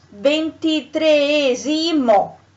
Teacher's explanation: this E that is at the end of the word is stressed, so it's a strong vowel